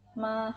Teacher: nada pertama adalah suara tinggi datar dan panjang nada pertama ini memiliki penanda seperti ini garis lurus Hai garis